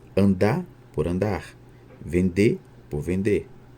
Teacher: no caso de andar nós temos a supressão do R que marca o infinitivo dos verbos